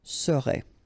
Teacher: the first S is quite strong